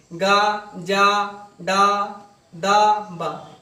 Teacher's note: ये आपके क्या हो गए आपके सघोष और अल्पप्राण दोनों हो गए